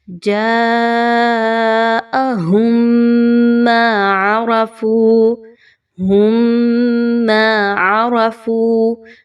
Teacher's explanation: میم ساکن کے بعد میم کا حرف آئے گا تو آپ نے وہاں پر غنہ کرتے ہوئے پڑھنا ہے